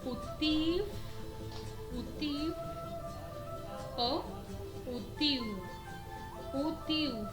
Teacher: Al final de las palabras, la W va a sonar como F o U.